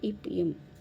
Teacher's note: மேலிதழும் கீழிதழும் பொருந்துவதால் பிறக்கும் எழுத்துக்கள்